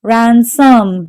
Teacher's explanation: So the stress is on the first syllable.